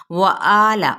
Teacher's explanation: واو ہونٹوں کی ناتمام گلائی سے، آ پہ مد اصلی بالالف کا قائم مقام، لام کی حرکت کو لمبا نہیں کریں گے۔